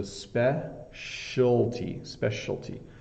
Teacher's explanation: specialty this is the part that's tricky it's specialy specialty so it's hard because all of these letters the c i a l t they kind of merge into one sound